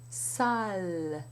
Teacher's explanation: Instead of having l, as we have in English, the tongue pushes down and only the tip curls up, and it touches very lightly against the upper teeth.